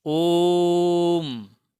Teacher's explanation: ओ को इसके ह्रस्व की अपेक्षा 3 गुना देर तक बोलिए, ओम, तब हुआ ये ओम। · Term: प्लुत स्वर